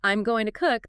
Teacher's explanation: In I'm going to cook, going might get some stress, but in I'm going to cook, the stress usually lands firmly on cook, the main verb. So if you miss cook, you've missed the main point, because gonna itself is so reduced.